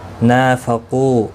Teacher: نا الف مدہ ہے، ایک الف کی مقدار کے برابر کھینچ کر پڑھیں گے. قو واو مدہ ہے، اس کو بھی ایک الف کی مقدار کے برابر کھینچ کر پڑھیں گے.